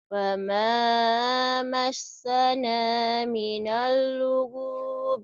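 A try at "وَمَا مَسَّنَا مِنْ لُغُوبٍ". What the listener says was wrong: nggak ada minal, nunnya mati. massana min lugub.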